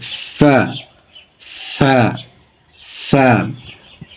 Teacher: উচ্চারণের স্থান সামনের উপরের দুই দাঁত এবং নিচের ঠোঁটের পেটের সাথে লাগিয়ে বাতাস জারি রেখে